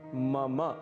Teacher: इसे मम बिल्कुल भी नहीं कहना है, इसका शुद्ध उच्चारण है मम। मम अंत में अ की ध्वनि अवश्य आनी चाहिए